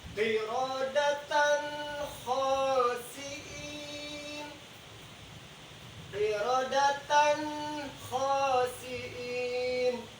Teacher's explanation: Tanwin ketemu dengan huruf kha berhukum idhar, dibaca jelas.